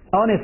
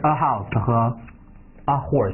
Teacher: 他们首字母▁H▁没有发音